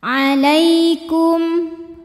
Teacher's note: Lai ada harfulin sebab ada ya sukun didahului baris fathah, maka dibacanya lembut